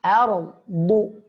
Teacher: a tipis, ra tebal, dad tebal. Ardu. Sekali lagi a tipis, ardu.